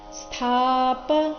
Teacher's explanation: ಸ್ಥಾಪ ಇಲ್ಲಿ ಥ ಮಹಾಪ್ರಾಣ ದೀರ್ಘ